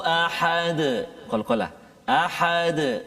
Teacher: Qalqalah yang sederhana di akhir ayat kan.